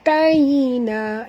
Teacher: Ya di sini sifatnya lin, lembut. Jadi kita kena baca di sini lembut.